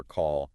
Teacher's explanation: Especially the dark L at the end of words like in feel or call